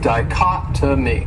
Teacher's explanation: And that third syllable, it has that schwa, that sound.